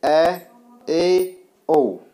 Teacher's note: अर्धविवृत जिनके उच्चारण में मुख आधा खुलता है